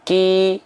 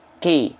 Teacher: yang atas e keluar nafas sedikit yang bawah enggak boleh keluar nafas yang atas nama sifatnya hams yang bawah nama sifatnya adalah jahr